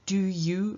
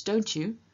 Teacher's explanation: For example, in English, if you compare do you versus don't you, you can tell that there's a little bit of a difference in the pronunciation of the you the second time. First time I say you, second time I say something closer to shu